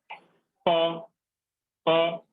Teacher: नीचे वाला जो ओठ है वो ऊपर वाले ओठ में एकदम स्पर्श कर रहा है।